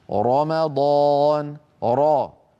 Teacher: الحالة الأولى من حالات تفخيم الراء أن تكون الراء كما نرى على اللوحة مفتوحة، نحو الراء من رمضان